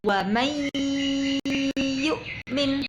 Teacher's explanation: Nunnya, suara nunnya hilang, sudah masuk ke suara ya. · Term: idgham bi gunnah